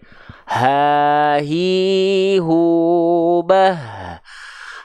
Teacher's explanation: Hak besar itu dilafalkan dari tenggorokan paling bawah atau sering kita sebut dengan pangkal tenggorokan. Bukan dari dada. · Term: aqsal halqi